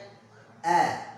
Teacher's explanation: Pengucapan hamzah koto ini dia makhrajnya adalah di bawah atau di tenggorokan yang bawah seperti H. Maka ketika pengucapannya a, perhatikan bibir kita.